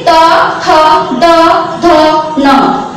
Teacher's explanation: जब हमारी जीभ दांत को छूती है तो ये दांत से टकराते हुए निकलते हैं